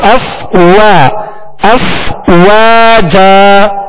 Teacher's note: واو کو واو دونوں ہونٹوں کی گولائی سے ادا ہوتا ہے. اب اس طرح نہ پڑھا جائے اف واجا، اف وا، وا نہیں پڑھیں گے، وا، اف وا، وا کو بھی اس کے مخرج سے ادا کرنا ہے نا، جیسے فا کو اس کے مخرج سے ادا کیا کہ اوپر کے دانتوں کے کنارے اور نچلے ہونٹ کا تر حصہ، اف وا.